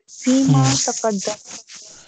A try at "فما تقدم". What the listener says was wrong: ये फीमा नहीं है, फामा जो पहले। नहीं, यहाँ पे फी नहीं है, यहाँ पे फा दूसरा वाला है, अरफे जर वाला फी नहीं है।